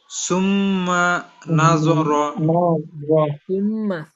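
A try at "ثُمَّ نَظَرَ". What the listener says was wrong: লম্বা হবে না সুমার মধ্যে গুনা হবে মিম আবার লম্বা হবে না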